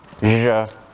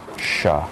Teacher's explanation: One is voiced, zh. The other voiceless, sh.